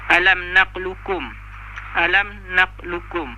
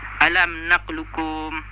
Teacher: dalam tajuk ini qaf tu qalqalah tu hilang, sifat qaf tu hilang dan memasukkan ke huruf kaf. Kira dia bunyi macam ni lah, alam naqlukum, alam naqlukum. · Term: idgham kamil